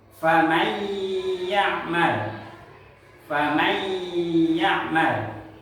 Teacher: ditengungkan dan ditahan. kurang lebih dua sampai tiga harakat. Famal jangan dibacaan ymalaman ymal itu salah. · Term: idgham biguna